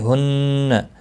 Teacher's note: یہ ہا جو ہے نرمی کے ساتھ پڑھا جاتا ہے سانس کو چھوڑتے ہوئے